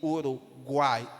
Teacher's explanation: Na palavra saquão, o U e o O representam semivogais, enquanto que o A é a vogal mais forte e é vista como a vogal, saguão. E Uruguai, o U e o I soa mais fraco, são semivogais, e o A é a vogal. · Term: tritongo